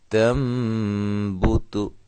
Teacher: اب ایک تا، یہ باریک ہے، اس کو ہم موٹا نہیں کریں گے